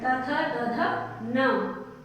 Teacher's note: दंत्य मतलब दांत, जो दांत से बोले जाते हैं। त वर्ग के जितने भी लेटर्स हैं वो दांत से बोले जाते हैं